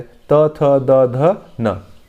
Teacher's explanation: दंत होता है। त, थ, द, ध, न दंत से बोले जाते हैं।